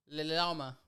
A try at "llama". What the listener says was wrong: No, it's just llama. It turns into a Y in Spanish.